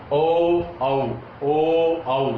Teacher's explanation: देखो होठों की आकृति वृत्त के समान हो जाती है। 4 जो शब्द हैं, ये जो 4 वर्ण हैं, ये 4 जो वर्ण हैं ये ओष्ठ आकृति के आधार पर वृत्ताकार कहलाएंगे।